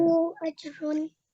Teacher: make sure you count up to your 3 counts for the Maddu Saghir